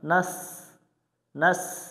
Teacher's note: সিন অক্ষর শীষ দিয়ে পড়তে হয়